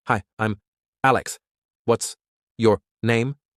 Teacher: Say the question with a slight rising tone on name. Common mistake, speaking too fast.